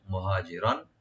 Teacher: রার উপর যে তানবিন যেখানে আমরা এজাহার করবো, গুণ হবে না